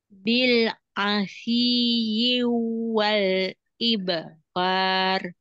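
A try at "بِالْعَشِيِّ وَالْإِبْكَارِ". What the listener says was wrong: Jangan masuk ke wau. Bil asyi wal ibkar.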